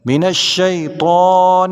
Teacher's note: طا موٹے حروف میں سے ہے، اس کو پر یعنی موٹا پڑھیں گے